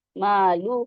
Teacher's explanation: عین کو اس کے مخرج سے ادا کریں گے اور نون سے ملائیں گے، ان، اور ہا پہ، ہا پڑھیں گے، ہا پہ پیش لگا ہے، انہو، مالوہ، لام، لام پہ پیش ہے، ہا پہ الٹا پیش ہے، اس کو 2 کاؤنٹ پڑھیں گے، مالوہ۔ پھر وما، وما کو میم پہ الف، الف مدہ ہے یہ، تو 2 کاؤنٹس پڑھیں گے اس کو، وما۔